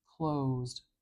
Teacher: words don't need uh a stress marker it's just assumed that the only vowel sound is carrying the stress and it's nice and clear and long and Loud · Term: primary stress